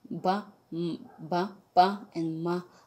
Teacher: ba, pa, and ma are bilabial sounds. Fa and va are labiodental.